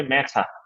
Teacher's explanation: যে র সাউন্ডটা ওয়ার্ডের শেষে আসছে সেখানে উচ্চারণ হচ্ছে না